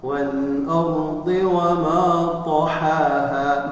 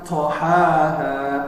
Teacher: Maka cara membacanya ditabkhimkan, ditebalkan tanpa ada udara, ya, karena dia bukan hamas. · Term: huruf itbaq